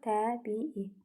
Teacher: İ'nin biri düşür, digəri uzanır. Ümumiyyətlə 2 eyni sait qoşalığı yanaşı gəldikdə söz kökündə biri düşür, digəri uzanır.